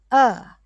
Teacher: when you say ah where is the sound coming from primarily throat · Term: kanta throat